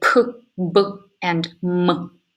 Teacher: made with both lips hands the term by labial and here the active articulator the lower lip moves up toward the passive articulator the upper lip and create creates a complete closure constriction here the next two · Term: bilabial